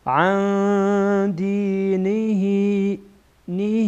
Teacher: بعد از اون ساکن دال آمده دال از حروف اخفا هست اخفا می‌کنیم